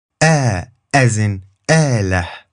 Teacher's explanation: sounds like a glottal stop with a long a afterwards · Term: alif al-mad